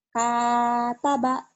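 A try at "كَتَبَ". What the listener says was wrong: Mungkin artikulasi bibirnya agak terbuka, agak ini ya. Jadi kayak hataba.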